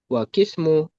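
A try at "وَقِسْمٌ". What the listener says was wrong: Pakai tanwin. Wa ismun.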